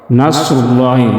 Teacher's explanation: نصر میں سواد موٹا پڑھیں گے، مستعلیہ حروف میں سے ہے۔